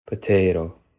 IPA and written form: pəˈtʰeːɾö̞ (potato)